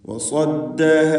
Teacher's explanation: വകുന്നാ മുസ്ലിമീൻ. വസദ്ദഹ, ഈ പദത്തിൽ സ്വാദിന് മാത്രം തഫ്ഖീം വരുന്നു. തടിപ്പിച്ച് സ്വരഭാരത്തോടെ സ്വാദ് ഉച്ചരിക്കുക.